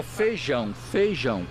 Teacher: a vogal i quando está com outra desaparece